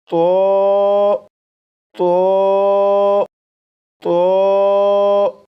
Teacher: اس لیے اس حرف کو پڑھنے کے لیے دو باتوں کا خیال رکھیے گا۔ نمبر ایک، زبان کی نوک اوپر سامنے کے دو دانتوں کی جڑ سے لگا کر پڑھے گا۔ نمبر دو، آواز کو موٹا کر کے پڑھے گا، جیسے تو تو 4 مرتبہ پڑھے گا۔ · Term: پر یعنی موٹا